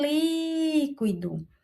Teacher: O li é a nossa sílaba mais forte e é a sílaba que é denominada de antepenúltima. Então, esta palavra é uma proparoxítona.